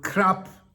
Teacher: crap pronounced with a short vowel in a middle tone